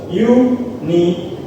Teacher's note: The primary stress is placed on the third syllable, for which contain the vowel. The first syllable has secondary stress.